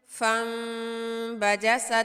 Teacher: نون ساکن اور تنوین کو میم المخفی میں بدل کر حرکتین مقدار غنّے کے ساتھ ادا کریں گے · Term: اقلاب